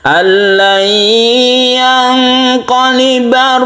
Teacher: Kemudian nun mati bertemu dengan qaf, iqlab, ini kita maksud saya nun mati bertemu dengan qaf ini ikhfa ya, bukan iqlab. Ikhfa artinya samar, kita samarkan membacanya, dan ini juga kita dengungkan